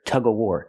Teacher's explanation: game is Tug of warar they're playing tug of warar and sometimes people don't pronounce the V